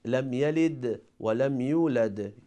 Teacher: for letter Dal, because Dal is one of the letter of Qutbujad, it has qalqala